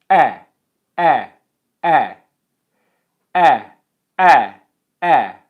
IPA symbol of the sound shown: eɪ